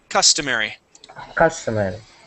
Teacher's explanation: So stress is at the very beginning.